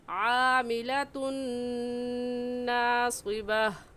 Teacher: आमिलतुन नहीं कहेंगे, ता को नून के साथ मिलाएंगे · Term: इदगाम